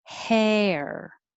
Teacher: you make time to make the vowel e before you curl it back for the r